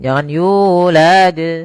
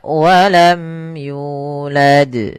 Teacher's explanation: Nah, di sini pada lafal yu ada mad th'i panjangnya dua harakat yaitu yulad. Hati-hati dalam lam jangan sampai panjang.